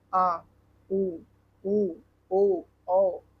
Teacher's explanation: जिन उच्चारणों के जीभ का पिछला भाग कार्य करता है। पश्च स्वर कहलाता है।